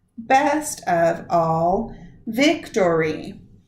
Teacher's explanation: the pattern is the stressed, unstressed, unstressed, stressed, unstressed, unstressed, which is a dactyl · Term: dactylic dimeter